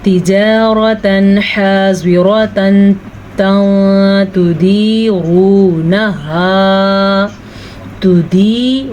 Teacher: تِجَارَةً حَاضِرَةً تُدِيرُونَهَا، تِجَارَةً، را کو پر پڑھیں گے، را زبر کی صورت میں پر پڑھی جاتی ہے. تنوین کے بعد حروف حلقی میں سے حا ہے تو تنوین کو ہم ظاہر کر کے پڑھیں گے بغیر غننے کے. ضاد کو پر پڑھیں گے، را کو زبر کی وجہ سے پر پڑھیں گے، اور حا اس کا مخرج آپ سیکھ لیں.